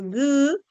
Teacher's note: cuando dices G ese sonido de la oclusiva velar Sonora